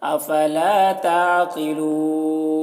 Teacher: अफला ता आइन को हलक सदा करेंगे, कौफ को पुर पढ़ेंगे, कौफ हुरूफ मुस्तालिया में से है और यहाँ पर वक्फ़ करेंगे तो मद्दे आरिज़ वक्फ़ी होगा.